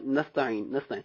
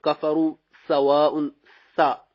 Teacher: تو سین جو ہے اس کو باریک پڑھیں گے